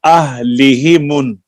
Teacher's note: اہلہ یہ اس کے اوپر آپ نے کیئرفل ہونا ہے، یہ ہا کو لمبا نہیں ہونے دینا.